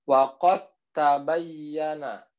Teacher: Dal sukun dimasukkan huruf ta. Dal dengan ta itu sama makrosnya.